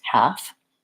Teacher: So many times people think they have to say the L in the word half, and really it's just the three sounds, H, a, and f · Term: silent L